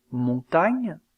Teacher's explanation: Enfin, dans le cas de l'occlusive gne, comme dans le mot montagne, il y a blocage de l'air au niveau du palais au moyen du dos de la langue. Aussi appelle-t-on cette occlusive une dorso-palatale.